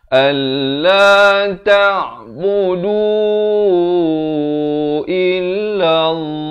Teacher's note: ain di pertengahan kerongkong.